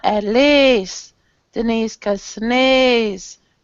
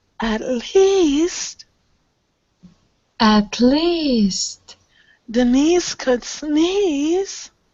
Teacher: You have to go up at least.